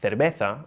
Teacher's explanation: European Spanish uses the th sound in words like cerveza, which in South America is pronounced cerveza.